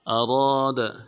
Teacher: اذا، اذا اراد، اراد، حمزہ کو نون سے ادا کرنا ہے، را کو موٹا کریں گے، را کے بعد الف مدہ ہے ، ایک دال میں کھینچیں گے، دال کو نرم سے ادا